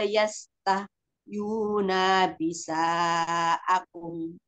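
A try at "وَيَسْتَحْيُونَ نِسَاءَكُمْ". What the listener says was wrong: Ya, nunnya jangan panjang Umi. Langsung ke nun lagi. Wayastah di apa dialirkan wayastah yuna nisa aku.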